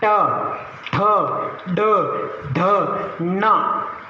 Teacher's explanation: फिर मूर्धन्य, ऋतु रसानाम मूर्धन्य, ये वर्ण है वो अपनी जिह्वा को गोल मुड़ेंगे तब बोलेंगे।